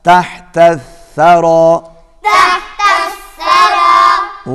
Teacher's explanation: ثا زبان کی نوک اور سامنے کے اوپر والے دانتوں کا کنارہ یہاں سے ادا ہوگا.